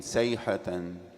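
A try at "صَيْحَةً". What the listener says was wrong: Swad is thick. You don't have sayhat. Soyhat.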